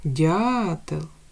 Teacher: дятел перший склад Ми вимовили з більшою силою голосу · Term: наголошений